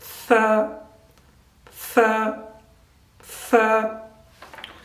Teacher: take our tongue out of our mouth, place it between our teeth and say tha, with little bit of air coming out